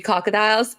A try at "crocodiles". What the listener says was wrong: The first time you did not put that first R in there. You said crocodiles. You said crocodiles.